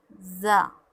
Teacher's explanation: سامنے والے دانت جب آپس میں ملیں گے تو زا ادا ہوگا، سیٹی کی آواز اس میں نکلے گی